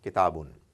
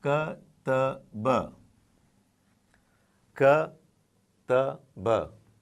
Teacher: It's like ta has an A, followed by alif, which is what is the partner letter of fatha. Now, when you have an alif immediately following fatha, the sound is going to be twice as long as that of simple fatha